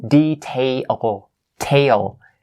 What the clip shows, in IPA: teɪl